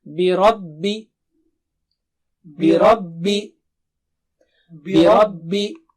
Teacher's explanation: را موٹا پڑھیے، بربی نہیں بولیں گے